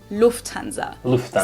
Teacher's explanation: So the emphasis is on the first syllable